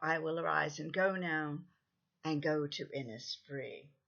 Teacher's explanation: Now, we're much more used to hearing pentameter lines with 5 stresses, so when you get an extra foot, an extra stress in hexameter, it feels long and slow. But Yeats also introduces a definite pause in the middle of most lines, which slows down the reading even more.